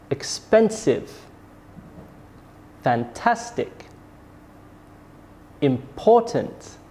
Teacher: the last three examples have stress on the second syllable